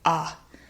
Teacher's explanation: Now this is a very interesting word because actually the first syllable, instead of ability, it gets reduced to something called a schwa. And a schwa is that relaxed central mid vowel. And it sounds more like ah.